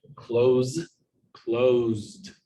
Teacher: so ed will sound like a d and then finally closed the s here sounds more like a z but it's still a voiced sound